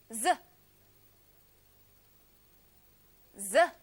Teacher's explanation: Направете теснец во устата. Врвот на јазикот подвиткајте го на долните заби. Пуштете воздух, а гласилките нека треперат.